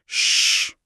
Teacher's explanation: जीभ और तालु के बीच का रास्ता इतना संकरा हो जाता है कि हवा को बाहर निकलने के लिए सचमुच संघर्ष करना पड़ता है। हम और इसी घर्षण से जो हिसिंग साउंड या गर्माहट पैदा होती है उसी के कारण इन्हें ऊष्म या संघर्षी व्यंजन कहा जाता है। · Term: ऊष्म व्यंजन